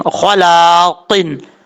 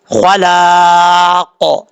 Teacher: خلاقن، خا حروف مصالحہ میں سے لام کے آگے الف ہے، حروف مصالحہ میں سے خا، اس کو پر پڑھیں گے، لام کے آگے الف ہے، ایک الف کی مقدار لمبا کر کے پڑھیں گے